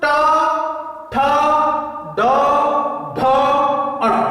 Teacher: जो ऊपर का छत है उसका जो प्रथम भाग है, पहला हिस्सा है, वहां पे जीभ क्या हो रही है, स्पर्श हो रही है।